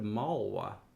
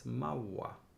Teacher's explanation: It could become a geminate W. So instead of malwa, it's mawa.